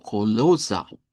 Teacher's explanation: cuando algo termina con er, el alemán estándar no utiliza el sonido de la R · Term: idioma no rótico